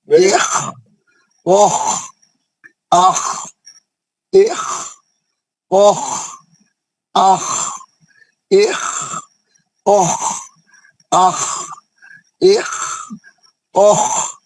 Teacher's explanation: خا ہے تو اوپری حلق سے پڑھا جاتا، یہ مستعلیہ رہنے کی وجہ سے پور موٹا پڑھا جائے گا اور کھردرا پڑھا جائے گا